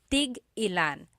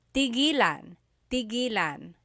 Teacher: Tig-ilan is a homonym, meaning it can have different translations depending on how it's pronounced. So tig-ilan, when there's a hyphen in it, you have to have that glottal stop.